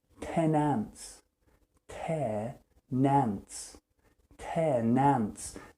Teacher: The N joins the word ants to make a new word, which is nants.